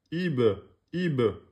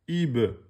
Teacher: Qalqala, donc, quand il porte soukoun, vous montez.